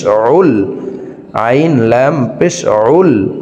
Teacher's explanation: আইন হরফকে হলকের মধ্যখান থেকে চাপ দিয়ে উচ্চারণ করে পড়তে হবে।